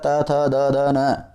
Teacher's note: त, थ, द, ध, न, ये सब में जो जीभ है वो दांतों को स्पर्श करती है, ध्यान रखिए।